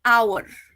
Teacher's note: Though the word starts with H, which is a consonant, the H over there is silent. Okay, so what we are saying instead is R.